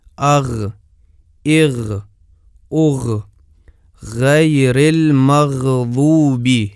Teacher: ملاحظہ کریں کہ مخرج کھلا ہے، بند نہیں ہے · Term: غین کا مخرج